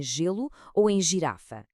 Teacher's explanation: o G amolece, transforma-se num som sibilante, muito parecido com o nosso J